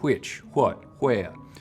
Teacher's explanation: some parts of texas will you still hear a wha sound